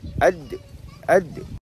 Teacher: Huruf dal ni dia ada bunyi lantunannya bila kita sebutkan. Dia jadi ad, ad. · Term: qalqalah